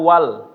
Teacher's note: Hamzahnya hilang. Ya, enggak dibaca. Nah, ini dinamakan dengan hamzah wasol ya, dibantu hilang dia ketika menyambung.